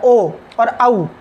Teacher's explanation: उसी तरह से ओ और औ का उच्चारण स्थान है कंठोष्ठ, कंठ भी है और ओष्ठ भी है। क्योंकि जब हम ओ बोलते हैं तो कंठ से तो ध्वनि निकलती ही है, बाकी हमारा ओष्ठ भी आगे की ओर फैलता है